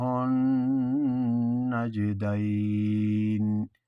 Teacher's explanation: نجدین میں غنہ بھی ہے اور جیم میں قلقلہ